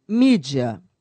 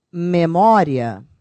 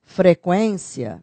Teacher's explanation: primeiro a semivogal e depois a vogal